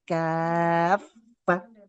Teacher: Wah, jadi huruf A-nya harus mengalir dulu suaranya. Kan fa bertasydid ya, mengalir suara dan juga nafasnya.